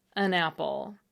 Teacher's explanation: According to the Oxford English Dictionary, it comes from the Old English word for one, which was pronounced something like on. However, when the word wasn't stressed, the ah vowel was shortened, so that an was pronounced more or less as un, as it still is today, when we're not thinking hard about how to pronounce it, an apple.